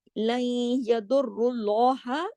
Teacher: अल्लाह के नाम पे पीछे रा पे पेश है, तो अल्लाह के नाम पे जो कि इस्म जलाला हैवी कर देंगे